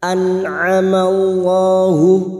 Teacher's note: nun sukun bertemu ain idhar halqi, dibaca jelas tanpa mendengung.